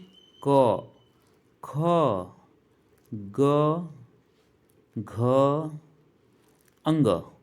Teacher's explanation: कंठ की बात की जाए तो जो क वर्ग है वो सभी कंठ से उच्चरित होते हैं